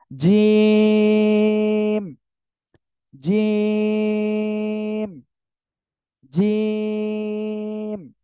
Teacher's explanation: জিম অক্ষর উচ্চারণ করব জিহ্বার মধ্যখান বা জিহ্বার মাঝখান, তার বরাবর উপরে তালুর সঙ্গে লাগিয়ে আমরা উচ্চারণ করব জিম, জিম, জিম।